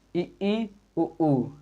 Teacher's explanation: मुख जो है हमारा वो लगभग ना के बराबर खुल रहा है इसलिए इन स्वरों को हम संवृत स्वर के अंतर्गत रखेंगे